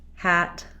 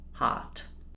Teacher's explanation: So if I'm saying a like black cat, I have opening only in the front. The back of the tongue is lifted versus a, the whole tongue is down.